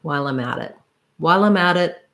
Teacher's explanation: matt and then we link the at to the it and this t changes to a flap which is more like a d sound